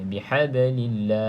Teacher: ba salah satu daripada huruf qalqalah, cuma berada di pertengahan kalimah, iaitu qalqalah sughra, letakkannya sedikit saja. Bihablillah, seperti bola yang penuh dengan angin kita lemparkan pada dinding terus terpantul pada kita.